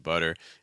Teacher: what's called like a flap t or fast d sound